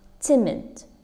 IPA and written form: ˈtɪmɪd (timid)